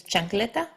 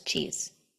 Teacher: it's actually two sounds stuck together in this case it's a t and a sh